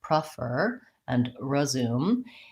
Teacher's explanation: the most important thing is that those first syllables in both those words are short and reduced and so they have a reduced vowel which can either sound